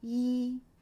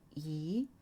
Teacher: the first one flat e the second go up e